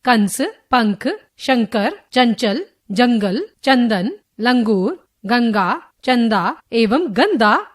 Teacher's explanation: इस ध्वनि का उच्चारण करते समय हवा केवल नाक से बाहर निकलती है और उच्चारण कुछ जोर से किया जाता है। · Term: अनुस्वार